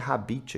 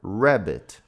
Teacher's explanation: A gente tem que pronunciar esse R como se fosse um R dobrado, tá? A gente fala retroflexo